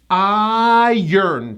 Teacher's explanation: There's a hidden 'y' and the 'r' comes after the vowel. · It's a two syllable word and the first syllable gets the stress.